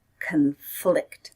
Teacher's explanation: Stress is on the second syllable